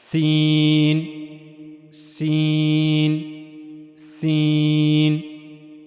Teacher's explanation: जबान की नोक का जो ऊपर वाला हिस्सा है यह दो अगले दांतों के अंदरूनी हिस्से के साथ जाकर मिलेगा नहीं बल्कि थोड़ा सा फासला रहेगा · سین کی ادائیگی کے لیے زبان کا اوپر والا حصہ، یہ جو زبان کی نوک ہے اس کا اوپر والا حصہ، اور اوپر کے 2 اگلے دانتوں کے اندرونی حصے کے درمیان تھوڑا سا فاصلہ، یعنی زبان کی جو نوک ہے اس کا جو اوپر والا حصہ ہے وہ اوپر کے اگلے 2 دانتوں کے اندرونی حصے کے طرف جائے گا، لیکن اس سے جا کر ملے گا نہیں، بلکہ درمیان میں تھوڑا سا فاصلہ ہوگا زبان کی نوک اور اوپر کے جو 2 اگلے دانت ہیں ان کے درمیان۔